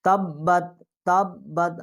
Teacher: ہم تا جو ہے یہ با کے ساتھ یہ تشدید کر کے پڑھیں گے کیونکہ آگے جو تا ہے اس کے اوپر جزم ہے وہ